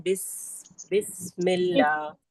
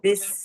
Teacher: और सीन में सीटी जैसी आवाज आती है, जैसे हम पढ़ते हैं बिस्मिल्लाह, पढ़ते हैं बिस, सीन में आवाज आती है ना?